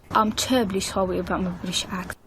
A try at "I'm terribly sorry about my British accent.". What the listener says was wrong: Again, I'm terribly sorry. You got to really work on that r. So r. Really try really hard to replicate every rendition of the R sound so that when you're really red and ready to rumble, you can say your R without any rectification